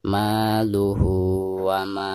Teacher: bacaan ma di sini dipanjangkan 2 harokat karena dihukumi mad tabi'i